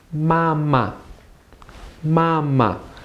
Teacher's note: the first part is first tone the second one is neutral